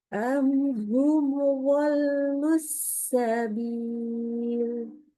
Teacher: nggak boleh tuh dipanjangkan dengung pada mimnya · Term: idhar